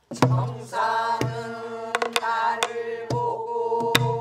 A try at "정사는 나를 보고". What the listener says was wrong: 그렇게 너무 늦게 내리면 안 되고. 정사는 나를 보고. 빨리 끊어줘야 일곱 번째 박에서 말없이가 나오지. 근데 미리 안 끊어주면은 말없이가 늦어지니까. 정사는 나를 보고.